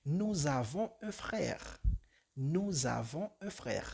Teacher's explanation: la S se combina con avons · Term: liaison